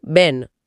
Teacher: માન્ય ગુજરાતીના જે મરમર સ્વર હોય છે જેમ કે બહેનમાં હ નો ઉચ્ચાર એ અહીં ઘણીવાર સંભળાતો નથી સાદો સ્વર બની જાય એટલે બહેનનું બેન હા બેન તો ઘણું કોમન છે પછી ચ